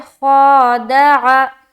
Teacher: ख़ा को मुँह भर कर बोलेंगे, मोटे हरूफ में से है, ख़ा अलिफ ज़बर ख़ा, दाल ज़बर दा, बारीक दाल को, आइन ज़बर आ, ख़ादा।